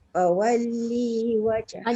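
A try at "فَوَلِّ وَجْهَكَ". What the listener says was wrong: Jangan panjang pula. Li tu jangan panjang.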